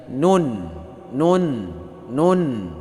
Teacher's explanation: Ujung lidah menyentuh gusi gigi atas dengan menyertakan dengung di bawah makhraj lam sedikit.